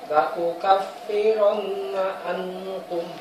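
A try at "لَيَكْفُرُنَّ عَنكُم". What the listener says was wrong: Kurang ditekan. Gunnahnya mana? Gunnahnya? Ankum. Mana ikhfahnya? Dibaca ikhfahnya.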